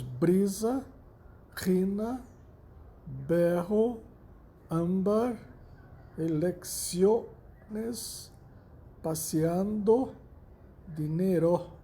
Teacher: La sílaba tônica cai en la penúltima sílaba. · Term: llanas ou graves